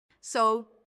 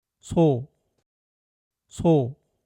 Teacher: This difference comes from where the tongue is placed when you say the sound. In English, your tongue gets very close to the upper teeth and gums. The air pushes out with more force between the tongue and teeth, making the sound feel strong and sharp. So. But in Korean, the tongue naturally rests near the lower gums and doesn't block the air much, so the sound flows out gently between the teeth and feels much softer. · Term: English S